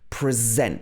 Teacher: this present versus present the first one is a verb so here the stress is on the zent the second syllable